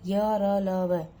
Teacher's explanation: जो व्यंजन जीभ, तालु, होठों को परस्पर सटाने से उच्चारित होते हैं किंतु कहीं भी पूर्ण स्पर्श नहीं हो पाता उन्हें अंतस्थ व्यंजन कहते हैं। ये व्यंजन स्पर्श व्यंजनों और ऊष्म व्यंजनों के मध्य में स्थित हैं।